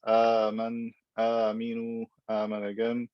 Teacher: he stretches the mad badal beyond its natural length